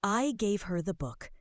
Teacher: Stressing I means I was the one who did it, not someone else.